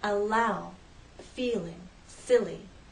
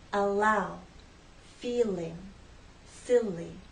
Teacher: the tip of the tongue drops down to flow into a following vowel sound